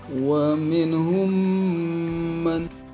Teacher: pertemuan antara mim sukun dengan huruf mim lagi dan dibacanya didengungkan ditahan syukuran 2 harokat. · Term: idgham mutamatsilin shogir